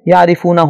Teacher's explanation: را کے نیچے چونکہ زیر ہے لہذا اس کو باریک پڑھنا ہوگا